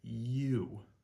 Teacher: it starts with a E almost, a Y sound, and then transitions you all the way to an oo sound at the end. So these two different types of U's actually live, so to speak, at opposite ends of the English word you.